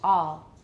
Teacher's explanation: what I'm saying is I have more rounding with all but with all just a plus l or LL I have very very little rounding so watch all and that makes it sound native-like to me